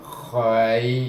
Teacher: Kha datangnya daripada hujung halqum